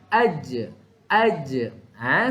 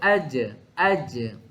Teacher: Lantunan. Bila mana jim mati dia ada sedikit sahaja lantunan. · So, tengah lidah akan sentuh lelangit keras di atas. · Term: qalqalah